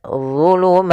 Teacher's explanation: ada D tebal ujung lidah kita menempel dengan gigi seri